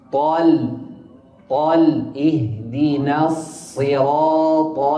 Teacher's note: اهدنا الصراط المستقيم. الصاد مكسورة مشددة مكسورة، والراء مفتوحة وبعدها ألف مفخمة، والطاء أيضا مفخمة